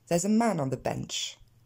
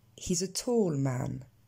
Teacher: Si vous m'écoutez bien, man ressort plus que tous les autres éléments, même s'il y a un rythme dans ma phrase.